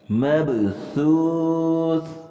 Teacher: اور یاد رکھیں سا نرمی والے حروف میں سے ہے، اور سا کے ادا کرنے کا انداز بالکل نرم، اور زبان کو ہم نے تھوڑا منہ سے باہر نکالنا ہے، مطلب باہر بالکل تو نہ نکلے، ہونٹوں کے برابر آ جائے، دانتوں کے ساتھ اوپر نیچے والی سائڈ تھوڑا سا کنارہ لگے گا، اور بالکل نرمی سے ادا کرنا ہے۔